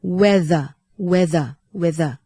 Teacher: whetherตัวthในคำนี้จะออกเสียงเป็นเสียงก้องค่ะ